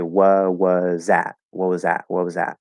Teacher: we'll probably drop the t at the end of what as well · the t at the end is is going to be there in the form of a stop uh most likely a glottal stop